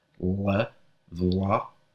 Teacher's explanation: The word for brother in Standard Albanian is vlla, with what's called a dark L.